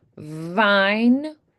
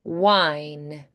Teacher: So you might try vine and it might come out as wine instead because there's not enough friction there. So make sure there's a slight buzzing sound from that friction of air passing through the teeth and lip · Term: V sound